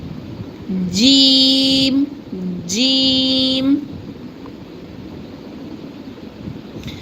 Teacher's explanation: the middle part of tongue is touches the upper palate here